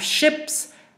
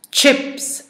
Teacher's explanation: it may be pronounced as a sha instead of a cha sound